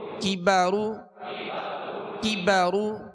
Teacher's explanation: زبر با کی با را پیش رو کی بارو کی بارو کاف کو باریک پڑھنا ہے یہ ڈنڈی والا کاف ہے اور را کو پر پڑھنا ہے